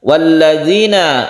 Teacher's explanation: ada mad tabi'i karena ada sukun ya, sebelumnya ada kasroh, dibaca satu alif saja